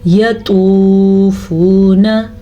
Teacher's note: توا کو بھی موٹا پڑھنا ہے کیونکہ توا ان 7 حروف کے گروپ میں شامل ہے جو ہمیشہ پر پڑھے جاتے ہیں۔ ان حروف کو حروف مستعلیہ کہا جاتا ہے۔